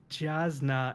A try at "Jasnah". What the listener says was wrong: it's Yasna. Hint for the pronunciation. Pretty much any name that starts with a J has a Y sound.